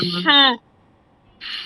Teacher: হা হা হ। হ্যাঁ, হ হাটা মোটা করে হবে, দাবিয়ে বলতে হবে